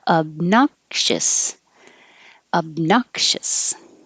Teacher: you don't release the k i'll put the little mark there to remind you don't say obnox but the tongue goes up in the k position